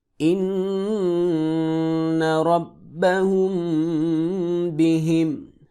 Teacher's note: میم ساکن کے بعد با ہے یہاں پہ غنہ ہوگا.